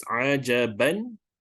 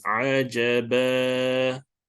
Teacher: So every time when an ayat ends with a Fathatain, we have to convert it to a Fatha. So instead of reading as Ajaban, we have to read it as Ajaba with 2 counts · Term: Mad Iwal